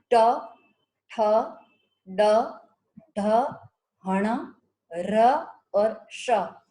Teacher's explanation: मूर्धन्य यानी कि ऐसा व्यंजन जिनका उच्चारण करते समय हमारी जीवा हमारे मूर्धा का स्पर्श करती है। मूर्धा यानी कि हमारे मुख के अंदर, हमारे दांत के आसपास और ऊपर जो मूर्धा है उसका स्पर्श करती है, उसे मूर्धन्य वर्ण कहते हैं।